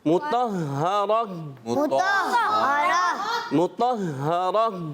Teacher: گول تا کو وقف کرنے کی صورت میں ہا سے بدل دیتے ہیں